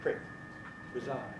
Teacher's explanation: When the stress is on the last bit, preside, the first vowel gets weaker and becomes I, prick, preside.